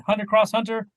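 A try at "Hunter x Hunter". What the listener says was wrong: just Hunter Hunter. You don't pronounce the X. Hunter.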